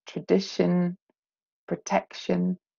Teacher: the stress pattern for shun words, there is a pattern or a predictable way that those words carry their stress, yeah, with the penultimate syllable carrying the stress